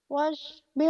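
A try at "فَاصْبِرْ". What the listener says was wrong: fa bukan wa, fa f. Fasbir li hukmi rabbika wa la tuti' minhum asiman aw kafura.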